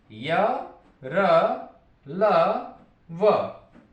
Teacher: इसके बाद य, र, ल, व, ये अंतस्थ व्यंजन कहलाते हैं क्योंकि इनका उच्चारण हमारे मुख के अंदर ही हो जाता है। पर्टिकुलर किसी मुख के किसी भाग को स्पर्श नहीं करते, मुख के अंदर इनका उच्चारण होता है, इसीलिए इन्हें नाम दिए गए अंतस्थ व्यंजन।